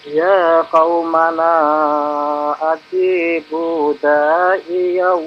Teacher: Da'iya, da-nya ada alif di sana, Pak ya. Panjangkan 2 harakat.